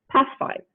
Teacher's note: the sound is keeping its place of articulation which is alveolar it is still alveolar but instead of a stop it is becoming a fricative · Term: assimilation of manner